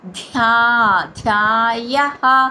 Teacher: మహాప్రాణ అక్షరం ధ దానికి దీర్ఘక్షరం